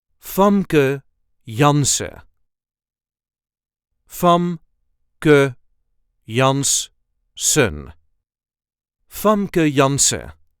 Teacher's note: There is a slight emphasis on the first syllable of the first name and also on the first syllable of the last name.